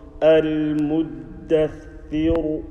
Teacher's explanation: And the ra, you will read it. Full mouth.